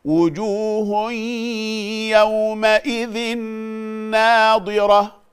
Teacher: يومئذ ناضرة ده إدغام بغنة